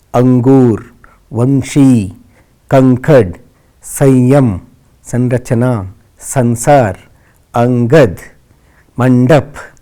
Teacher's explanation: यह स्वर के बाद आने वाला व्यंजन है जिसकी ध्वनि नाक से निकलती है। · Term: अनुस्वार